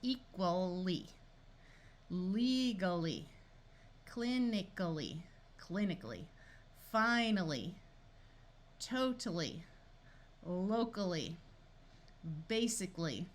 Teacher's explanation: the suffix l y it's going to sound like Ali because the suffix a l at the end of a word schwas so that's the Al and then the Lee part right here